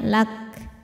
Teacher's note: di huruf kaf ini jangan sampai ketinggalan hamznya atau harus dikeluarkan anginnya ya. Jadi saat kafnya sukun, suaranya dulu keluar, lak, baru ada anginnya, belakangan anginnya, lak.